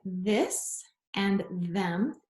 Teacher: th sound um and it sounds like this and them and it's voiced you can hear your vocal chords vibrate when you say those